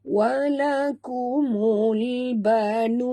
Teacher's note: Kita wakaf dengan mad arid disukun dan bunyikan nun yang kita matikan di hujung ni dengan jelas.